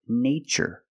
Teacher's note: in this spelling pattern T is pronounced with the CH sound like chicken